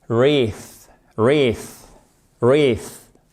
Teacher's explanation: Ce EA se prononce comme un I long. Et ici, ça se prononce comme un TH non sonore, c'est-à-dire que vous ne faites pas vibrer les cordes vocales.